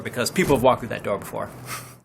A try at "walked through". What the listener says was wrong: 여기도 발음이 walked through. walked through 해야 되는데 마치 그냥 walk through처럼. 그렇죠.